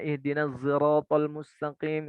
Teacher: Ada lagi zai ismam, sod yang bercampur dengan zai